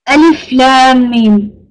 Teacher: make sure that lam and mim, you pronounce them like 5 to 6 harakas